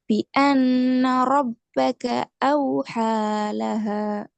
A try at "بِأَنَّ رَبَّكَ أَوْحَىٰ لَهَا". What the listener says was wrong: ஹாவனிட்டதும் ஹாவனிட்டதும் லைட்டா வந்தா நல்லா. أوحالها லைட்டா ஹ ஹ என்று அந்த இடத்துல நிப்பாட்ட வேணாம். ஒரு முடிவாக நிப்பாட்டணும் வசனத்தை.